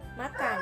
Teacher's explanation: bunyi m jadi cirinya hidup nasal bilabial